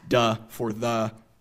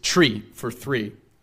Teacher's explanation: a tendency to harden both the voiced and voiceless TH sounds in words like the and three to the dental stops T and D, respectively. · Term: TH stopping